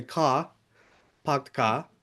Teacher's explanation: you're not producing that you know post vocalic r